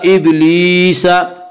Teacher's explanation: یا مدہ کو ایک الف کے برابر کھینچ کر پڑھیں گے